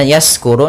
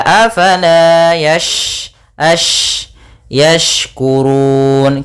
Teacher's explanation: huruf shin ada sifat tafasyi, yaitu intisyarus sauti fil fam, yaitu menyebarnya suara di dalam mulut itu lebih banyak dibandingkan yang kita keluarkan